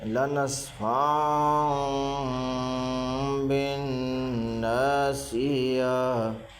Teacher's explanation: دو زبر کے تنوین کو میم سے بدل کر گنہ اخفا کے ساتھ پڑھیں گے۔ اس کو اقلاب کہتے ہیں۔